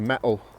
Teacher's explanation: We don't pronounce the T. We don't push the tongue into the back of the teeth. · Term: dropping the T sound